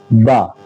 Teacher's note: دونوں ہونٹوں کی تری والا حصہ جب ملتا ہے تو با نکلتا ہے